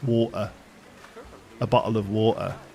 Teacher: There's no T there. There's just a very slight glottal stop instead.